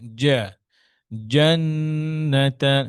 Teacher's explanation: জিমটা জিমটা আরেকটু পিছনে, মধ্যখানে জিব্বাটা জা, জান্নাতান, এই যে এই আওয়াজ না আসে, হ্যাঁ, জিব্বার টিপ থেকে যেন না হয়, মিডল অফ দ্য টাং।